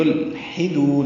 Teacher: یلحدون لام ساکن پہ اظہار ہوگا، یہ اظہار قمری نہیں ہے، یہ ویسے لام ساکن پہ اظہار ہے، یعنی لام کو ہلانا نہیں ہے۔ یلحدون حا وسط حلق سے ادا کرنا ہے